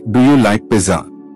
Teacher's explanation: Your voice should rise at the end. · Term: intonation